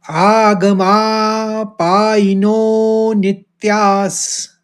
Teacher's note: नो को ज्यादा खींचेंगे क्योंकि अवग्रह है। फिर नित्यास, नित कहेंगे, फिर त्यास कहेंगे विसर्ग का उच्चारण करते हुए सौ का।